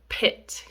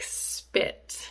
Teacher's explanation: we have the aspirated p, which is when we release a blast of air when we make this sound, the word pit.